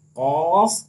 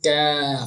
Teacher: तो जबान की जो जड़ है और तालु का जो नर्म हिस्सा है वहां से कॉफ अदा होता है। और काफ जो है ये जबान की जड़ और तालु के सख्त हिस्से से अदा होता है।